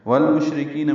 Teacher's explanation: والمشرکین میں لام ساکن میں پھر اظہار قمری ہے، شین ساکن ہے، اس میں ہمس ہے، تفشی ہے، آواز منہ میں پھیلتی ہے، سانس جاری رہتی ہے